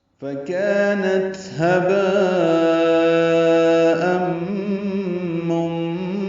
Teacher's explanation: ہباءً میں ہا اقصی حلق سے ادا کریں گے جلدی · کانت میں کاف باریک ہے اور الف مدہ ہے، یہ 2 حرکات لمبا ہے. نون کو تا سے ملائیں گے، تا ساکن پہ ہمس ہوگا، یہ باریک پڑا جائے گا.